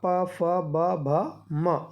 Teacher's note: पा वर्ग जो है वो ओष्ठ से उच्चरित होता है